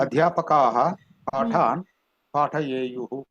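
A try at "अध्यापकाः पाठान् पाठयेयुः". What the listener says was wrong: ఉత్తమం మహోదయ.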